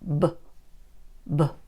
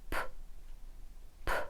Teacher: The only difference is with B, you use your voice, and with P, you didn't.